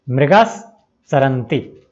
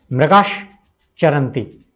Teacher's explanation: मृगास का जो स है वह दंत्य स है, जिसको पहले हम किस में बदलेंगे, तालव्य श में, मृगाश चरन्ति, और अब संधि हो जाएगी मृगाश चरन्ति, हिरन चरते हैं।